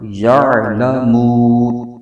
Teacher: عین کو حلق کے درمیانی حصے سے ادا کرنا ہے